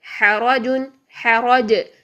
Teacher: جیم کی آواز کو ہم نے ہلا دیا کیونکہ قاف طا با جیم دال ان کو ساکن حالت میں ہم نے ہلانا ہوتا ہے